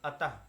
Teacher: विसर्ग जो होता है इसका उच्चारण जो है आधे हा की तरह होता है